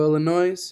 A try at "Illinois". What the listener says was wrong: Y'all killing me with putting that S on. Illinois. Y'all killing me with that. Y'all making a bunch of Illinois with that.